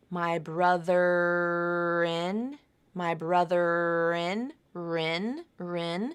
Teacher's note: allow that final R consonant sound to link you over to in